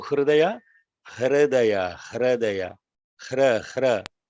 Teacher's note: Ra is the vowel. Ra is not the consonant. So the vowel R is pronounced there.